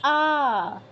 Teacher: আ এর ক্ষেত্রে বাংলার মতই অনেকটা আ বেশি সময় নিয়ে বলতে হবে